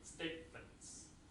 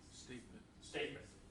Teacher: the T in statements becomes a p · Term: assimilation of place